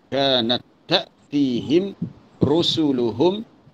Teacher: Kanat ta'tihim rusuluhum. Ta'tihim mim mati bertemu dengan ra. Itu izhar syafawi, tak ada dengung lah. Terus rusuluhum, ini kena dengung.